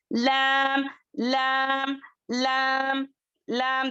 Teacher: ऊपर के जो दांत थी उसके पैलेट्स जो है वहां पर टच करने से लैम अदा होता है